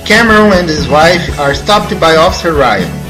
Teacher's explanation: Deleta-se a letra H na palavra his. Então emenda-se and e his, formando ands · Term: Supressão da letra H